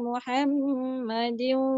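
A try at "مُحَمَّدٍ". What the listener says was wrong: Lama sikit dia harakat dia.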